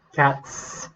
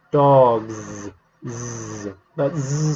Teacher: your hand on your neck it's that well say cats cats the S doesn't make your throat vibrate